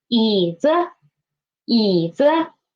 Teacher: when it is after the third tone, the pitch of the neutral tone will be higher